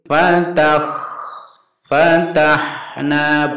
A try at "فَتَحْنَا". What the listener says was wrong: bukan fatah, kalau itu nanti kho. Hati-hati di sini, ini harus pendek ya. langsung.